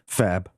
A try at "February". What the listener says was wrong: You got to get the. I think you got to get the R in there technically.